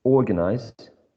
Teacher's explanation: this has three syllables and the primary stress is in the first syllable · And the primary stress is in the first syllable. The first syllable is the most prominent of the three that you can see in this word.